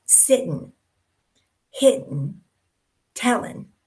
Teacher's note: a lot of times they'll drop the G off and you end up with sitting, hitting, telling.